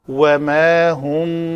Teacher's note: تو واو کے لیے شفتین گول کریں گے، ما کا بعد الف جو ہے وہ پتلا پڑا جائے گا